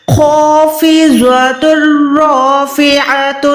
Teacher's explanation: خو موٹا ہوتا ہے، اس کے ساتھ جو الف ہے ہم نے وہ بھی موٹا ادا کرنا ہے، ہم الف کو باریک نہیں رکھ سکتے۔